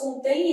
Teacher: Então, vai ser um ditongo fonético decrescente. · esse M vai ter som semivocálico. Então, vai ter som de I. Contém vogal, som de semivogal.